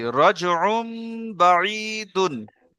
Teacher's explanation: তানবিনকে মিমের দ্বারা পরিবর্তন করে এককালী পরিমাণ গুন্না করে পড়তে হবে জি একে একলাব বলে ঠিক